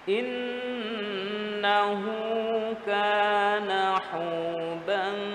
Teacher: Nun yang bertasydid Kita ingat, ditahan sesaat.